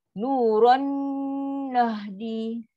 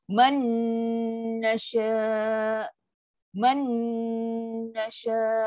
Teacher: Tanwin dengan nun sabdu. Memang maksimum punya dengung. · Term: paling sempurna